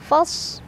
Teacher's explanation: sadnya punya sifat hamas, ada aliran angin. Kemudian pangkal lidah kita juga naik ya, isti'la. Dan punya ciri khas namanya sofir, ada desisan. Fasbir bir ro-nya dibaca secara tarqiq.